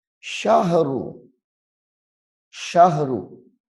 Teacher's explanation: یہاں پہ ہا کو ساکن کرنا ہے، شین کو ہا کے ساتھ ملا کے